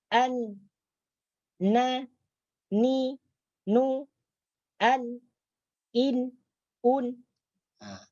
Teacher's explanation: Nah, yang kedua, ketika membunyikan huruf nun itu keluar dengungan daripada hidung, keluar bunyi dengung daripada hidung.